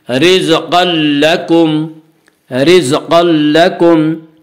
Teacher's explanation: تنوین کے بعد لام رہا اس لیے بغیر غنہ کے ملا کر پڑھیں گے، اسے ادغام بلا غنہ یا ادغام تام کہا جاتا ہے۔